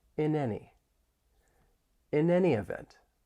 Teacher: we can link the final consonant sound in in with the vowel sound in any. In any. I want you to repeat after me right now. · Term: linking